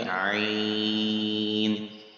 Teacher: حروف لین کے بعد سکون اصلی جزم ہو تو مد لین لازم ہوگا، جیسے عین، جب آپ اسٹاپ کریں گے عین، کھینچ رہے ہیں ہم اس کو عین، کیونکہ یہ لین ہے، حروف لین، اس کے بعد سکون اصلی ہے، اس لیے یہاں کھینچ کے پڑھیں گے عین۔